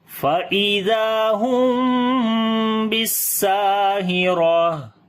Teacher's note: اور تا ہا بن جائے گی، جب رکیں گے · اور سین کو لمبا کریں گے، الف مدہ ہے، اور را کو موٹا پڑھیں گے، زبر ہے اس کے اوپر · فَإِذَا، زال کو نرم پڑھیں گے، لمبا کریں گے، الف مدہ ہے، میم ساکن کے بعد با آ گیا، اخفاء شفوی کریں گے، یعنی میم کی آواز کو چھپا کر پڑھیں گے، یعنی کہ جب ہونٹ آپس میں ملیں گے میم کے اوپر تو نرمی کے ساتھ ان کو ملائیں گے، سختی کے ساتھ نہیں ملائیں گے، اس کو اخفاء شفوی بولتے ہیں۔